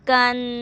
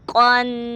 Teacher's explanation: یہ کاف کی آواز آپ نے باریک ادا کرنی ہے اور اس قاف کی تھوڑی موٹی، کیونکہ یہ موٹا حرف ہے